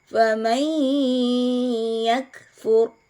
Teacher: Nun sukunnya dilebur ke huruf iya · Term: idgham bigunnah